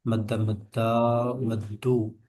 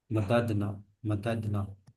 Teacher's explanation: ये मददना में दाल दाल अलग अलग हो जाएंगे, इनका इदगाम नहीं होगा।